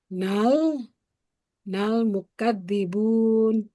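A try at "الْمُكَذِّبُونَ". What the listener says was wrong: Nalnya tadi alkomariahnya belum disebut.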